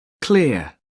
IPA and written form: klɪə (clear)